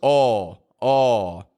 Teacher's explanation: the pure vowel is the strong part that's the part that goes oh oh nice and strong